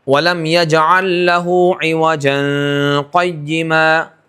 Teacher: جیسے وَلَمْ يَجْعَلْ لَهُ عِوَجًا قَيِّمًا، تو ملا کے بھی پڑھا، اخفا بھی کیا اور سکتہ بھی نہیں کیا